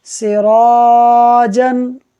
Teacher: را پر زبر ہے، را کو پر پڑھیں گے، جب را کو پر پڑھیں گے تو اس کے بعد جو الف ہے اس کو بھی ہم پر پڑھیں گے